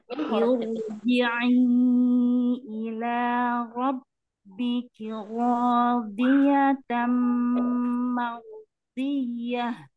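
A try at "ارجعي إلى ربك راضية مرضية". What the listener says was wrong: Mardiyah. Langsung, Umi. Jangan diputus-putus. Mardiyah. Mardiyah.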